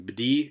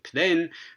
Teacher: Bdi and pden, these two initial sounds, both at the beginning of a word, both preceding a duh, contrast for voicing. So looks like voicing contrast there in a context where you definitely can't get one in English.